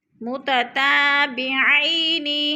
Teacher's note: اب متتابعین پہ الف مدہ ہے، الف خالی سے پہلے تا کے اوپر زبر ہے تو الف مدہ. الف مدہ کو ہم نے ایک الف دو حرکات کے برابر لمبا کر کے پڑھنا ہے · متتابعین، آئی پہ پھر یالین ہے، یالین کو ہم نے لمبا بھی نہیں کرنا اور جھٹکا بھی نہیں دینا